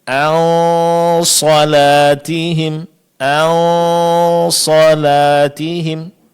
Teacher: arahkan suara ke makhraj huruf shad dengan mengangkat pangkal lidah. Maka suara dengung akan menebal.